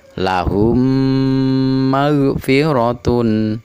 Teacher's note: yaitu huruf mim mati bertemu dengan huruf mim contoh lahum maghfiratun cara membacanya dibaca dengung dua harokat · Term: idgham mimi